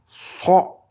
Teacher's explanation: La suivante, c'est comme un S qui se prononce du fond de la gorge